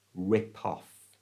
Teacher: move the P, the P sound, to the front of the O in off